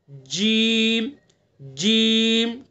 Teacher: तो जीम को जबान के बीच को ऊपर तालू पर लगाएंगे